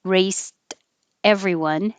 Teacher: the t sound is between two vowels so it will change to a d